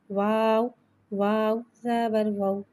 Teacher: واو کو ایک الف یعنی 3 حرکات کے برابر کھینچ کے پڑھیں گے اور واو کو ہونٹوں کی گلائی کے ساتھ ادا کر کے پڑھیں گے۔ واو ساکن سے پہلے زبر آ رہا ہے، واولین ہو رہا ہے، لہذا واولین کو بغل کھینچے، بغل جھٹکا دیے نرمی سے معروف پڑھیں گے اور زبر کو منہ کھول کے ادا کر کے پڑھیں گے۔